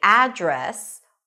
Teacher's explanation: with the stress on the first syllable and an 'A as in cat' sound